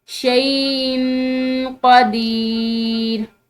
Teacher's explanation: اب یہ حمزہ کی تنوین ہے اور اس کے بعد قاف حروف اخفاء میں سے ہے، تو یہاں پر بھی ہم نے اخفاء کرنا ہے